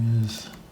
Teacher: is is spelled with an S of course but it sounds like a z